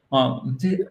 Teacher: en British English, ça sera partly. On entend à peine le R.